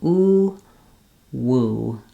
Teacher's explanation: sound basically you have lip rounding for both so I recommend starting with just ooh and then closing the lips to add the woo the W sound · doing the W sound and the ooh sound basically you have lip rounding for both so I recommend starting with just ooh and then closing the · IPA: /wu/